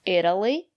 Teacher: the syllable after the letter T is not stressed we pronounce the letter t as a fast D